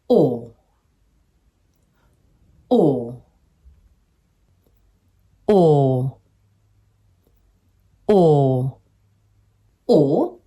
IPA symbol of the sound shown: ɔː